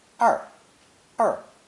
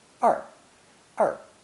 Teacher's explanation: This is the same retroflex R sound we mentioned in lesson 1. The Mandarin R sound is like the G in prestige or the S in television, except that the tongue curls back much farther.